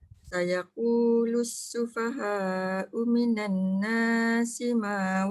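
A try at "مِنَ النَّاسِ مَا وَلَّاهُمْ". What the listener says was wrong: dia bukannya minan tu yang pendek, na tu yang panjang tau. Na tu dua je. Dia jangan minan nasima, jangan. Sayaqulu sufaha'u minan nasima wallahum. Slow sikit.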